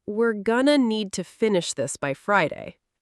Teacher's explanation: Notice going to becomes gonna. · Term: connected speech